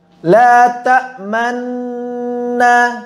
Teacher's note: Dan cara yang ketiga yang merupakan cara yang paling masyhur, dan ini ada cara yang paling banyak diamalkan, adalah mengisyamkan sepanjang gunnah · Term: ismam